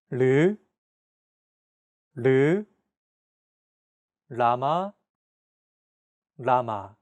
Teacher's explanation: This sound is actually somewhere between an L and an R sound. When pronouncing this sound, your tongue should strike the gum ridge behind your upper teeth in a quick, rapid motion. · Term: 리을